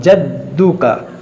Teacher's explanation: दाल हुरूफ कलकला है, हुरूफ मुशद्दद है, इसको दो पढ़ेंगे दो बार